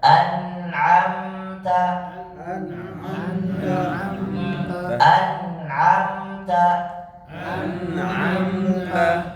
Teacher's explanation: kalau ditahan Saya jamin itu nun sukun bersih Tidak ada pantulan